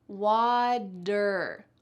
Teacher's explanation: And in American English, which is what I speak because I'm from the US, we change T's to D sounds when they're surrounded with vowels